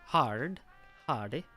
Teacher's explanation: The combination of R and D is not pronounced as two distinct sounds, rather like a thick D. Move your D to the position of R that is used.